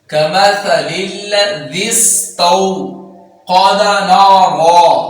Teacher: کے پڑھیں گے، کمثل الذی استوذا، ذا بغیر سیٹی کے اور آگے سین ہے، اس میں سیٹی پیدا کریں گے